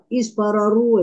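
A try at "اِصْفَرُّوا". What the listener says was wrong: Bukan. Rohnya tetap bersyiddah.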